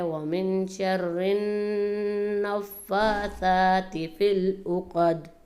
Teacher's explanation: من شر النفاثات کے نون پر زیادہ غنہ کیا جائے گا، یعنی آواز کو ناک میں بند کیا جائے گا · فی العقد کی دال میں قلقلہ کیا جائے گا